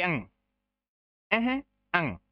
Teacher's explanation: इनका उच्चारण होता नाक से, जब बोलते हैं तो ध्वनि नाक में गुंजायमान होती है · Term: नासिके